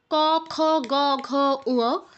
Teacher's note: তো এই প্রত্যেকটা অক্ষর কিন্তু একই জায়গায় গিয়ে টাচ করছে আমাদের কণ্ঠে, জিহ্বার পেছনের অংশ আমাদের কণ্ঠে টাচ করে এই ক বর্গের অক্ষরগুলো উচ্চারিত হচ্ছে